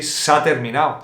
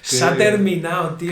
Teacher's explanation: este se ha is gonna become sa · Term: comprimiendo se ha